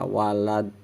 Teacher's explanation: huruf dal kecil mati karena waqaf, hukum bacanya qalqalah, jadi mantul huruf dalnya walad. Dan yang seterusnya fari, mad tabi'i, mad panjang.